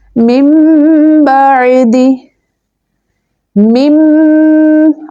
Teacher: اقلاب کیا کہتا ہے کہ جب نون ساکن کے بعد با لیٹر دیکھو تو وہاں پر نون ساکن کو میم سے بدل کر، یہ چھوٹی سی میم دیکھ رہے ہیں آپ، اس میم سے بدل کر اخفا کر کے پڑھیں